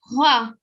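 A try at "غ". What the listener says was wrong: Okay, now right now they're sounding very similar. So they're two different letters, okay? This is, just listen carefully, okay? This is gha and this is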